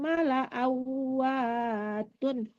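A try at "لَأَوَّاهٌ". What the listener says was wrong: tun. awatun, awahun, ya bukan tun ya.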